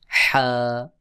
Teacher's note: হলকের মধ্যখান, গলার মধ্যখান থেকে চাপ দিয়ে বলতে হবে